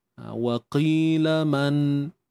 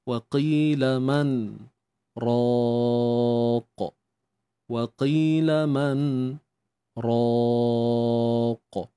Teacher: kita diam diam dalam tempoh lebih kurang dua harakat tanpa mengambil nafas yang baru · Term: saktah